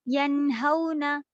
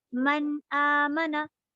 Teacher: आप नून को जाहिर करके पढ़ेंगी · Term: इज़हार